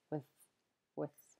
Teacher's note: almost sounds like the vowel's just been removed and you just hear the three consonants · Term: weak forms